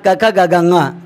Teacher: क वर्ग का उच्चारण स्थान कंठ से होता है, इस कारण क, ख, ग, घ, ङ कंठे व्यंजन कहलाते हैं या कंठे वर्ण कहलाते हैं।